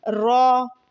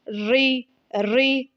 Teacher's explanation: را پر اگر زبر اور پیش ہوں تو را کو موٹا یعنی کہ پر پڑھا جاتا ہے، اور اگر را کے نیچے زیر ہو تو را کو باریک پڑھا جاتا ہے۔